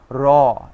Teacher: র উচ্চারণের সময় আমাদের জিহ্বাতে একটা কম্পনের সৃষ্টি হয় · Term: কম্পনজনিত ধ্বনি